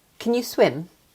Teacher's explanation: Swim is the main verb. Can is just helping that verb. So, it's weak.